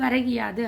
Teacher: ஒரு மாத்திரை அளவில் ஒலிக்காமல் அரை மாத்திரை அளவில் ஒலிக்கும். இவ்வாறு தனது ஒரு மாத்திரை அளவில் குறுகி ஒலிக்கும் இகரம் என்னன்னு சொல்கிறோம், குற்றியல் இகரம். · முதல் சொல்லின் இறுதியில் உள்ள கூ என்பது கீ என ஒலிக்கிறது. அதுவும் முழுமையாக என்ன செய்து, ஒரு மாத்திரை அளவில் ஒலிக்காமல் அரை மாத்திரை அளவில் ஒலிக்கும்.